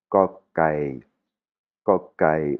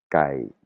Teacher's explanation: c'est ni un k ni un g, c'est une prononciation qui est très subtile. C'est entre le k et le g